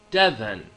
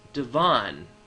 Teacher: heavier emphasis on the first syllable